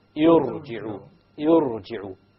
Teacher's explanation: If there is a Hamzatul Wasl, then the ra will be heavy, even if there is a kasra before it. Notice we said ir, which is a kasra. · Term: A heavy ra